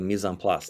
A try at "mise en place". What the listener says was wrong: No, you have to pronounce the CE in French. It's Mise en Place.